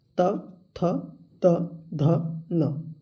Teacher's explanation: त वर्ग को बोलते समय हमारा जीह्वा जो है दांत से टच होता है